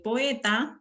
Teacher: muy bien entonces aquí en la cnr es y decíamos que tenemos dos vocales abiertas que se juntan para formar una sola sílaba métrica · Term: sinéresis